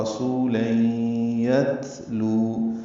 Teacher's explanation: تا باریک ہے اور اس پہ ہمس ہوگا. لو واو مدہ ہے، 2 حرکات لمبا کریں گے، ہونٹوں کو نہ تمام گول کریں گے.